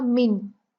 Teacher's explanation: मिन, और इस गुन्ना को हम लंबा नहीं करेंगे। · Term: इजहार